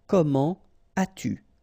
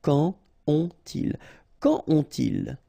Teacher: if you start with an adverb like here, so avec un adverbe, don't make the liaison. So, you don't say comment as-tu? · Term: no liaison